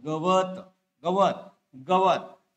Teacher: उच्चार गच्या पाठीमागे मागील अ चा उच्चार रस्व उच्चार आहे त्यानंतर व च्या पाठीमागील इथल्या अ चा उच्चार लांबट उच्चार आहे